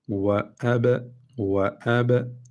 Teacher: Böyle iki dudağımızı birbirine vurup çekiyoruz. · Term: Kalkale